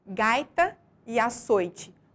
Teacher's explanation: em gaita a sílaba mais forte é a penúltima sílaba da palavra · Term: paroxítona